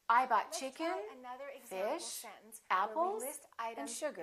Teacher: Each of those items that you list should have a rising intonation. · The last one will have falling intonation. So we go up, up, up, down.